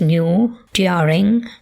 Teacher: We have historical yod retained in words such as new, during